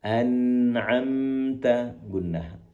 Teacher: gunnah ataupun mendengungnya lebih panjang.